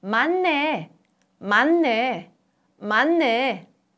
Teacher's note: Under the influence of 느, a nasal sound, 드 changes to 느, a nasal sound.